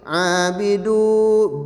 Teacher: bi makhrujul hurufnya di kedua bibir dengan merapatkan kedua bibir